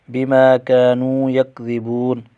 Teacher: بما كانوا یکذبون، میم پر الف مدہ ایک الف کھینچیں گے، کاف پر بھی الف مدہ، واو پر بھی واو مدہ، ان تینوں کو ایک ایک الف کھینچ کر پڑھیں گے۔